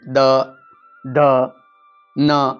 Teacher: બધામાં જીભ આપણી દાંતને અડે છે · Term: દંતવ્ય